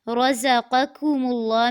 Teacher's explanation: رزقکم اللہ میں را کو پر کرنا ہے اور پہلا جو قاف ہے اس کو پر کرنا ہے اور دوسرے کو باریک کرنا ہے